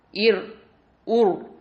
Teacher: இந்த repeated sound வரக்கூடாது